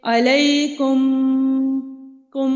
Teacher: میم کو ادا کرتے وقت دونوں ہونٹوں کے خشکی والے حصے کو نرمی کے ساتھ ملانا ہے اور ناک میں اس کی آواز کو چھپا لینا ہے ایک الف کے برابر، جیسے کہ علیکم کم.